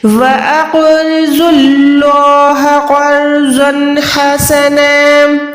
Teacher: قاف موٹا، را موٹی، زود موٹا. زن ہے تنوین یعنی دو زبر کے بعد ہے تو یہاں پر حروف حلقی ہے یعنی اظہار کریں گے، زن کو ظاہر کریں گے. · اللہ کے نام سے پہلے یہاں پر پیش ہے. زیر ہوتی تو باریک رکھتے، پیش ہے تو موٹا رکھیں گے. وَأَقْرِضُوا اللَّهَ قَرْضًا حَسَنًا، قاف موٹا، را موٹی، زود موٹا.